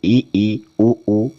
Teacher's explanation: तो इ उ यह संवर्त स्वर होते हैं। इनको हम उच्चारित करते हैं तो अपना मुख जो है वह बहुत ही कम खुलता है। · अपना मुख जो है वो बहुत ही कम खुलता है